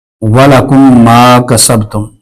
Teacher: میم ساکن کے بعد دوسری میم آ جائے تو ادغام شفوی ہوگا، یعنی کہ ہم غنہ کر کے پڑھیں گے، اور ادغام شفوی میں میم ساکن کا ہونا پہلے بڑا ضروری ہے۔